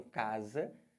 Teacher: o s entre vogais na língua portuguesa tem som de z